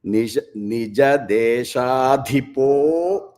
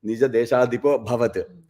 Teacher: But how you say that is Nija Desha-dhipo, you extend that po slightly and don't give a breath.